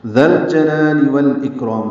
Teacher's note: ذال کو نرمی سے پڑھیں گے، لام سے ملا دیں گے، لام ساکن پہ اظہار، جیم کو جلدی پڑھنا ہے ، لا الف مدہ ہے، پھر لام کے نیچے زیر ہے،